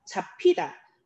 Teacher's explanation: 비읍과 히읗이 합쳐져서 피읍이라는 거센 소리로 되어 있는 걸 확인할 수가 있어요